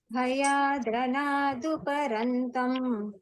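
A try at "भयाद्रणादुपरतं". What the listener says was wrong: Rantam, no, not rantam. Bhayadranaduparatam.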